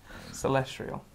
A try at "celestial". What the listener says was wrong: Celestial. There's no R in it. No, celestial.